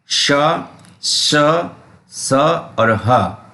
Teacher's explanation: जिन व्यंजनों के उच्चारण में वायु मुख से रगड़ खाते हुए बाहर निकलती है जिससे ऊष्मा पैदा होती है उन्हें ऊष्म व्यंजन कहते हैं।